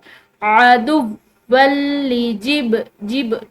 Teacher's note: ये बा इसको हिलाकर पढ़ना है क्योंकि ये कलकला में से है हरूफ कलकला में से और कलकला कहते हैं अल्फाज़ को हिलाकर पढ़ना यानी कि गोया कि यह अपने मखरज से जो है जैसे कि लाइक टक्कर खाकर अलग होते हैं।